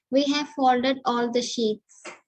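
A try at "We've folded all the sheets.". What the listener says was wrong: Read it with the proper contraction. It's not we have. It's a contraction. How do you read it? We've folded. It will be hardly audible. So that have sound should not come.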